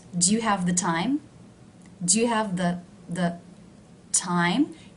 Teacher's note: Do you see how the word the is low in pitch?